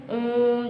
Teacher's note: इसको उच्चारण करने में और भी ज्यादा समय लगता है तो इसे हम प्लुत कहते हैं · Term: प्लुत स्वर